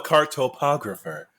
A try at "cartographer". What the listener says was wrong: you got too many syllables.